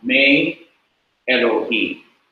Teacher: the short kirik has to be lengthened to a different vowel, to the vowel sire, a long E sound like in they, T-H-E-Y, they, A.